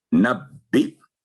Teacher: آگے ہے نبی، یہاں بھی دیکھیں بڑا جو حرف ہے دیکھنے میں یا نظر آ رہا ہے اور بعض دفعہ متاثر کرتا ہے یہ، تو حمزہ کو ہم کاؤنٹ کریں گے، یا یہاں پر سائلنٹ ہوگا کیونکہ حمزہ یا کے اوپر ہے. تو نبی حمزہ پر جھٹکے کی آواز آئے گی